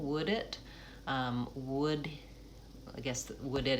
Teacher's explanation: Would it is a place where I want to link the D and the it. So as I'm practicing, would it, would it is the one that has the most linking.